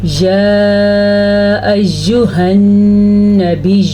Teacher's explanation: یہ مد 3 حرکات عربیہ کے برابر ہے، 3 سیکنڈ تک تقریباً لمبی کرنی ہے